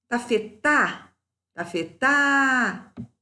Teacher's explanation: Sílaba tônica é a última, é oxítona.